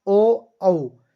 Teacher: कंठ और ओष्ठ इनका उत्पत्ति स्थान हो गया, तो इनको कंठोष्ठे बोल जाएंगे अपन।